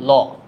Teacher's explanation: পার্ষিক ধ্বনি হচ্ছে ল